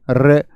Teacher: रे को जब आप बोलेंगे तो रे को बोले रे, तो जीभ कांप जाती है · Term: लुंठित व्यंजन